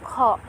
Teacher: খটা হবে হলকের শেষ ভাগ।